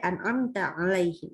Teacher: Jadi baca mimnya ini jelas nggak pakai dengung. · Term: idhar syafawi